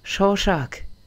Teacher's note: en alsacien, on va tout prononcer en ch